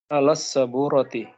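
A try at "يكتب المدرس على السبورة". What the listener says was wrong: Alas saburati, ahsanta.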